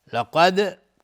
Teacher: ثبتناک لقد کدت لقد قاف از حروف استعلاس غلیظ تلفظ میشه. دال هم قلقله میخواد